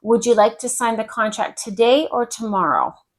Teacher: a rise and fall if you're giving someone a choice